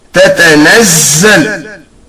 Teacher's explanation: It is pronounced from the beginning part of tip of the tongue and the upper side of the lower incisor teeth as Tatanazzal.